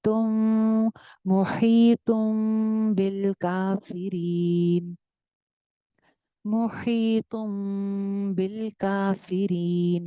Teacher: यानी कि नून की जो आवाज है मीम में चेंज हो गई है। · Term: इकलाब